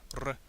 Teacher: the Latin R is always rolled, making a R sound both at the beginning and end of a syllable. This letter was sometimes called the littera canina, or dog-like letter, because it sounded a bit like the growling of a small dog.